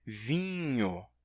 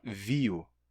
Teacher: Esse i mantém a nasalidade que outras vogais terminam não mantendo.